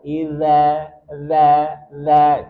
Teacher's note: jadi ada sedikit lidah yang keluar